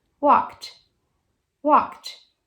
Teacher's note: É assim que pronuncia esse ED, com som de T.